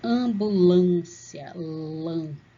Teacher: Você percebe que o som passa aqui pelo nariz também, som nasal.